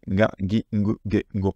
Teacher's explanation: on ne va pas prononcer ga, gi, gu, ge, go, mais ga, gi, gu, ge, go avec le nez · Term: pidakuon